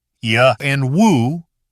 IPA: j and w